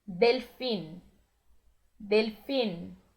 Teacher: Lembrando que o N termina no céu da boca